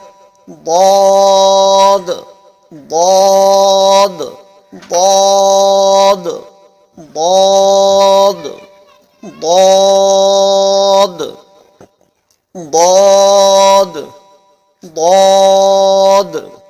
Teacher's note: کنارہ زبان ڈاڑھ سے مل کر ضاد ادا ہوتا ہے